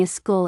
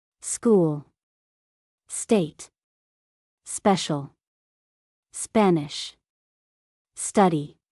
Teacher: For example, saying a school instead of school or a special instead of special or a state instead of state. English does not add an extra vowel before s plus consonant words.